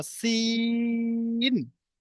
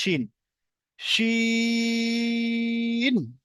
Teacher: তারপরেরটা হচ্ছে শিন, প্রথমটা সিন, তারপরটা শিন, একটা হালকা একটা মোটা, সিন একটা শিন, সিনটা হালকা, শিনটা একটু মোটা করা হবে। সিনটা দন্তের সাথে দেন, দন্তের সাথে পাতলা হয়, দন্তের সাথে যেটা উচ্চারণ সেটা একটু পাতলা আওয়াজে হয়, সেই জন্য এটা দন্ত দিকে দন্ত না, সিন।